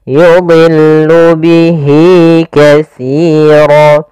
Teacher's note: dha di sini huruf isti'la termasuk huruf tafkhim, maka dia tetap ditebalkan